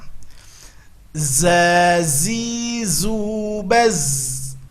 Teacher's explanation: Kalau tadi harus keluar ujung lidah, sekarang tidak. Ujung lidah nempelnya ke gusi bawah dan kedua gigi ditautkan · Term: huruf za